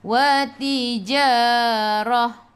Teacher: Rah bila berhenti ta marbutah jadi ha. Ta marbutah bila berhenti jadi ha.